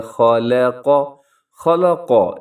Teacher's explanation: یہاں خا موٹا ہے، لام باریک ہے، قاف موٹا پڑا جائے گا